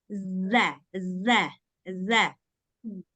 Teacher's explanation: yang makhrajnya di ujung lidah, kemudian bertemu dengan 2 gigi seri atas bagian luar. Jadi dia harus keluar lidah. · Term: zal